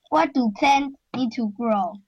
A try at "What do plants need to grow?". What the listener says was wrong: With an S. What do plants? With an S.